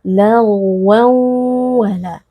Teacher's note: Sehingga ketika kita membaca huruf ghain yang sukun harus ada sedikit aliran suaranya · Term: ghain sukun